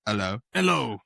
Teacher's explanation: drop the H sound completely